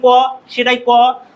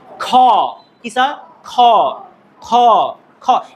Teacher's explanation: এজন্য আমরা আসলে যদি বলি খ হবে না। আমাদের ভিতর থেকে একটু বাতাস বাইরে বের হয়ে আসবে। বিষয়টা হচ্ছে এমন খারা খ এখন একটু জোর করে প্র্যাকটিস করুন বাট কয়েকবার প্র্যাকটিস করলে আপনি অটোমেটিকলি আসলে ঠিক হয়ে যাবে। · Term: মহাপ্রাণ